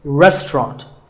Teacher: in british english you might hear just two syllables